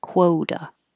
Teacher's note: your lips are rounded while you're making the K and then they get less rounded and then more rounded